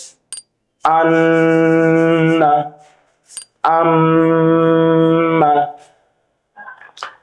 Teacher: 16 নম্বর মাখরাজ, নাকের বাঁশি হইতে গুন্নাহ উচ্চারিত হয়।